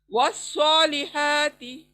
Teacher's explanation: الف لام خالی آیا ہے، تو وا سے صاد شد پہ جائیں گے · ہا کے پر دھیان رکھیں، سینٹر آف دا تھروٹ سے آنا ہے اس کو، والصا موٹا پر، والصالحات۔